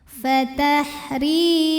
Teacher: Kemudian ada mad tabi'i dhahiri. Karena ada ya sukun didahului baris kasrah, maka huruf ra panjang 2 harokat